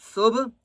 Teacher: قالوا، صبح، سین با پیش، صبح، با کے اوپر قلقلہ کریں گے